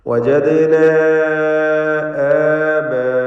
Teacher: ദാലിൻ്റെ സുക്കൂൻ ഖൽഖല സുഗ്റ നൽകി ശബ്ദം ഹറക്കത്ത് പോലെ ചലിപ്പിക്കുക. വജദ്ന ആബാഅന, വജദ്ന എന്നതിലെ അലിഫിൻ്റെ ദീർഘം മദ് മുൻഫസിൽ ജായിസ് എന്നതാണ്.